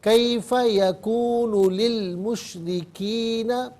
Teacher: مشرکین میں جو را ہے، را کے نیچے زیر ہے، را پر زبر یا پیش ہو تو پر پڑھتے ہیں، زیر ہو تو باریک پڑھتے ہیں، یہاں سے باریک کر کے پڑھا جائے گا۔